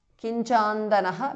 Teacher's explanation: Kinchandanaha because of sandhi. Anuswara changes to nya.